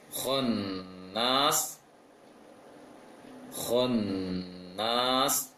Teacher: Jadi yang bulat, yang agak membulat sedikit adalah kho.